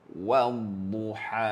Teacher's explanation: Huruf dad tuan puan, huruf yang perlu disebut dengan tebal.